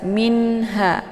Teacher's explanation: Ini dibaca jelas minha ya. Nunnya dibaca jelas karena idhar halqi ataupun idhar hakiki ya.